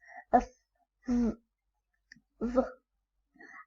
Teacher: Labiodental, the articulators is lower lip and upper teeth.